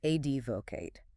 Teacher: Three syllables. Stress on the first this time.